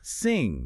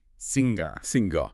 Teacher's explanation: The tip of your tongue is down. The back of the tongue blocks the throat.